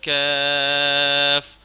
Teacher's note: یہ بغیر نقطوں والا کاف ہے، اس کو باریک کر کے پڑھنا ہے